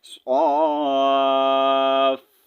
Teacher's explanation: جب ہم صاد کو سٹریچ کریں گے تو اس کے لاسٹ میں ہم نے جو ہے ہلکا سا فا کا ساؤنڈ نکالنا ہے